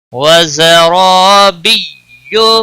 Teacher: یا کے اوپر تشدید ہے تھوڑا سختی کے ساتھ پڑھیں تاکہ یا تشدید ظاہر ہو